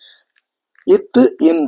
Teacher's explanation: நாவின் நுனி மேல்வாய்ப்பல்லின் அடி அப்படின்னு வரும்